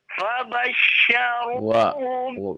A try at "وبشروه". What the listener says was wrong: Bukan fa, wa.